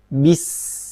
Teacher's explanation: Kemudian sin, sukun ada sifat hams.